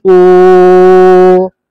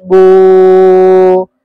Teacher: واو مدہ، واو سے پہلے پیش، واو ساکن سے پہلے پیش ہو تو واو مدہ ہوگا. واو مدہ کو ایک الف کے برابر کھینچ کر پڑھیں گے